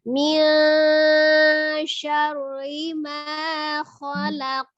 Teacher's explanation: Sebelumnya dia fathah di huruf sin itu sinnya fathah kan? Jadi syar tebal. Ketika ri-nya tipis.